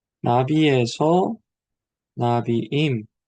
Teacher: 액센트가 앞쪽에 있다가 뒤쪽으로 forward to the new syllable로 옮겨진다는 것이죠